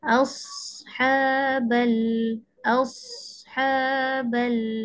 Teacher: Okey huruf sad ada sifat rakhawah. Okey rasanya awak kena tarik lagi sad. Jangan baca pendek sangat.